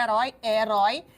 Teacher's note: eu tenho um ditongo aberto em vocábulo oxítono ou seja na última sílaba tônica